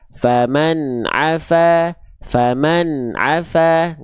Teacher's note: jadi nggak boleh memantulkan suara huruf nun